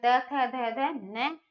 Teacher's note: दंत से। जीभ जो है दांतों को आके लगती है।